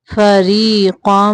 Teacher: را کے نیچے زیر ہو تو را کو باریک پڑھتے ہیں